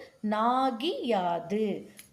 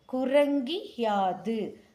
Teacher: கூ டூன்னு உகரத்தில வரக்கூடியவைகள் யாவுடன் சேரும்போது இகரமா மாறறத நம்மனால பார்க்க முடியுது. இந்த இகரம் தன் மாத்திரையில் இருந்து குறைந்து ஒலிக்கும்.